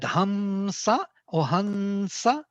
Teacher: It's not m. It's actually nasal sound associated with s, dental n.